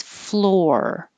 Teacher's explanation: you have to round your lips and bring your tongue back and hold it to make the er noise floor keep making noise er as you have the tongue in